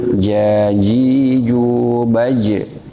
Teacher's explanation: bukan di ujung lidah tapi di tengah lidah